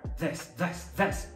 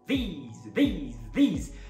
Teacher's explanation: Eles só começam com o mesmo fonema que é o ever, mas a vogal do singular é e, a vogal do plural é ei, ei. A consoante final do singular é s, e a consoante final do plural é z, um z, beleza?